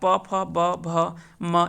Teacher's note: ये सभी जो है वो ओष्ठ से उच्चारण होने वाले कह सकते हैं कि वर्ग है।